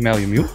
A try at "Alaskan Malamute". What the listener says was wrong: Where are you getting that extra U from? It's Malam... No, you're saying Malamute.